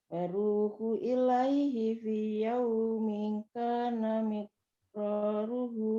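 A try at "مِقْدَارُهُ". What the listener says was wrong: Daruhu. Daruhu. Beda huruf ya. Itu sebelumnya dal, yang berikutnya ro. Bukan ro. Miqdaruhu khamsina.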